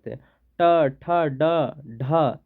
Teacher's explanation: ट ठ ड ढ जन कर हमरे मन उच्चारण करथ तो मुर्धा कर प्रयोग हुआ